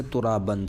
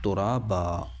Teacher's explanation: تنوین ختم ہو جائے گی، حذف ہو جائے گی، اس کے بدلے میں الف آ جائے گا، اور ایک زبر کے ساتھ ملا کر اس الف کو پڑھیں گے جس طرح حرف مدہ پڑھا جاتا ہے، جیسے ترابن سے ترابا۔ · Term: مد عوض